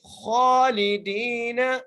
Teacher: خا کے اوپر کھڑی زبر ہے کھینچ کے پڑھیں گے اور خا کو موٹا کر کے پڑھیں گے